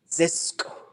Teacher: A little puff of air at the end.